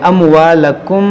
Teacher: یہاں پر دیکھیں یہ میم ساکن کے بعد با ہے, یہاں پر اخفاء شفوی ہوگا, یعنی غنہ کریں گے, ناک میں آواز لے جائیں گے